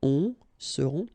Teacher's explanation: Ils seront, final T not pronounced, and then you've got this nasal